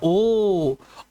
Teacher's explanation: ओ और औ का उच्चारण कंठोष्ठम कंठ ओष्ठ होता है। कंठ और ओष्ठ से दोनों की सहायता से उच्चारित होते हैं